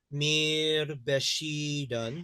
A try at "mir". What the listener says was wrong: Mir, not me, mir, mine.